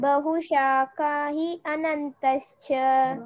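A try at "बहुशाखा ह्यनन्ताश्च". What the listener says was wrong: But together you should not say he. Bahushaka hyanantascha.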